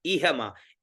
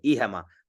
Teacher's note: फिर इहमा, ई है और मा, इहमा, ई में नीचे, हा में ऊपर और मा में बीच में